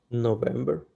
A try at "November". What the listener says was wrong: November. Good, November.